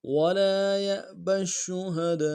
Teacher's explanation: ولا میں لام کے ساتھ الف مدہ ہے، ایک مقدار میں کھینچیں گے۔ ولا یأبش میں بیا کو حمزہ کے ساتھ ملانا ہے، جھٹکا دیں گے۔